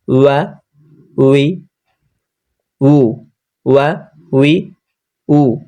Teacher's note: 2 ঠোঁটের মাঝখান হতে উচ্চারিত হয় ওয়া। 2 ঠোঁটকে জড়ো করে রাখবেন প্রথমে, দিয়ে ছেড়ে দিবেন ওয়া ওয়া ওয়াও।